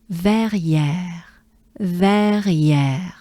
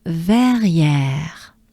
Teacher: So we accentuate the ver, the first part.